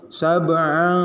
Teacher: Tanwin bertemu dengan huruf shin dibacanya dengung. Sab'an, tahan dulu. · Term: ikhfa